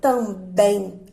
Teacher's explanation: a sílaba mais forte da palavra é bem